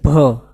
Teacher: ભ બોલવા માટે અહીંયા પ્રયત્ન કરવું પડે અંદરથી પ્રાણ પૂરવા પડે